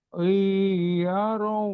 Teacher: Suara lan ini jadi lau, Sabilau. gabung ke waw, itu idgham bi gunnah